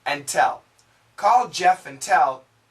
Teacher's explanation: Now the D and the T are similar sounds, so we connect.